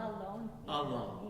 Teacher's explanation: make the L of alone also sound alone by making it slightly longer and more liquidy